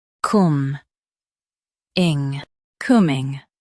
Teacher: Stress coom and keep ing soft.